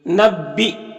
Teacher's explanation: حمزہ ساکنہ ہے یا کی شکل میں تو جھٹکا لگے گا، با میں الف مدہ ایک الف کے برابر کھینچیں گے۔